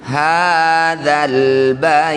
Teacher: Hadzal baiti ya sukun didahului fathah bertemu huruf hidup kemudian dihentikan disebut bacaan namanya mad lin ya sama dengan yang tadi. Nah jadi ya sukunnya ini baca lembut panjangkan enam harakat huruf terakhir sukunkan. Hadzal baiti setelah dihintikan, hadzal bait.